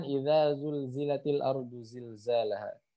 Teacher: zai juga sama termasuk huruf yang sofir, ketika dibaca pelan pun dia masih terdengar ada desisnya